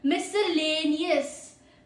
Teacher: Pro tip, 5 syllables, stress on third. There are 5 syllables, third पे ज्यादा stress डालो।